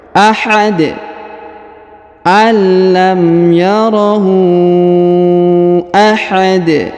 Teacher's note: di atasnya terdapat tanda panjang bacaan lima harakat alam yarohu Ahad huruf Dal atau Dun yang di ujung ya dirubah menjadi sukun karena kita berada di ujung bacaan atau di ujung ayat ini ya maka kita rubah menjadi Sukun